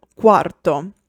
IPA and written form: ˈkwarto (Quarto)